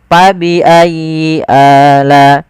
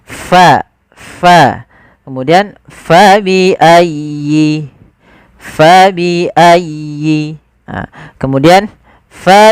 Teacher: ada angin yang dikeluarkan, karena fa salah satu sifatnya sifat hamz, yaitu mengalirnya nafas kita.